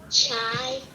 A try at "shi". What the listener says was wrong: No, you're saying C-H. C sounds like S-H. I is just a short I sound.